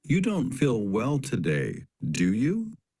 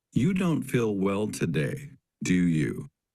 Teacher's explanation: Try saying each question twice. First, imagine you are 80 to 90% sure that someone will agree with you and use rising intonation. Then imagine you are 95% sure that someone will agree with you and use falling intonation.